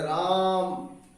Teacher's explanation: मैं आपको बताता हूं, जैसे आप किसी को बुलाते हैं, सपोज कीजिए आपका कोई मित्र है, आपका कोई घर वाला है, संबंधी है, जिसको आप दूर से आवाज लगाते हैं, आप आवाज लगाते हैं राम, इस तरह से जब आप आवाज लगाते हैं तो आप देखते हैं कि रा को आपने बहुत लंबा खींचा था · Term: प्लुत स्वर